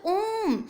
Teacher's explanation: दीर्घ स्वर से भी थोड़ा अधिक समय हमें लग रहा है, यानी ये प्लुत स्वर हो जाएगा